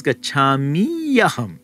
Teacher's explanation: the ikara changes to the ya. The word karoti followed by odanam, he makes rice, then it would be written karoti odanam, where the ikara changes to the ya.